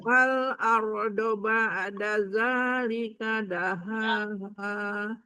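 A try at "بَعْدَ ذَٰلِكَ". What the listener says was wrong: Ba'da, ainnya dibetulin. Ba'da zalika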